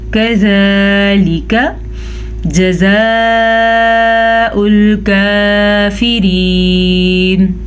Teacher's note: كَذَلِكَ یہ باریک کاف ہے تو اس کو باریک ہی پڑھیں گے